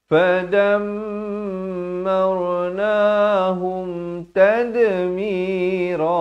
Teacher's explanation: Jangan baca fadammar, itu tak betul. Yang betulnya fadammar ra di sini jadi tebal.